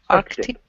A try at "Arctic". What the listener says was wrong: Yeah, close. Work on that K sound. Arctic. People are often lazy and simply say Arctic, the Arctic Circle.